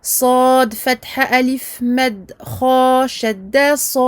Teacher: Il faut qu'on entende le صاد, la fatha, la prolongation de 6 temps et à la fin le kha.